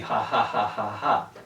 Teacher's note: it's an h-like sound you could call it a glottal fricative